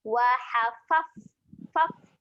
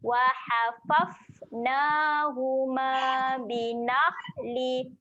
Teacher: huruf fa ketika mati sifatnya ada keluarkan angin